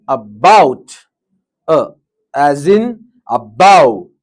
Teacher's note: Keep your lips relaxed, jaw slightly open, tongue central and relaxed, and make a weak and short uh, sound. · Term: Weak uh, sound